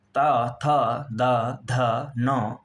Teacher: साथियों चौथा उच्चारण स्थान है दंत्य अर्थात दांतों की सहायता से बोले जाने वर्ण है लृतु लसाना दंतः ल त वर्ग त थ द ध न एवं ल और दंत स ये वर्ण दांतों की सहायता से बोले जाते हैं